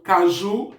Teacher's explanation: caju é uma palavra oxítona, porque a sílaba tônica é a última sílaba da minha palavra